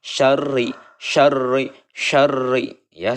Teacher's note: Kemudian mengenai hukum ro, ini adalah dibaca tipis karena ro berharokat kasroh. Karena ro berharokat kasroh, dibacanya harus tipis. Syarri ya, sempurnakan dulu tasydidnya, lalu kita tipiskan ya.